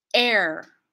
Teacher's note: I'm not saying the H I'm not saying hair I'm leading in with that glottal stop as if it's a consonant